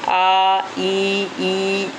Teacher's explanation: आई ये हमारे होट ऐसे फैलते हैं इ ठीक है ना तो ये कहलाएंगे अव्रत आकार यानी जो होट गोल नहीं होते हैं